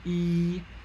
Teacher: of perceive this in yourself as well make a vowel e you are raising your tongue into a high front position that's where the highest arch of the tongue is e you